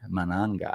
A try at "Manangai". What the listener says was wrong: You gotta stretch the guy part at the end. Manangai.